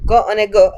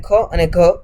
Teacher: ક અને ગ અલ્પપ્રાણ છે જ્યારે ખ અને ઘ મહાપ્રાણ છે